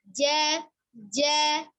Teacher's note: huruf jimnya tadi ja-nya dari tengah lidah ini ketemu dengan langit-langit.